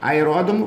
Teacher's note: é a sílaba tônica é a antepenúltima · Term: proparoxítona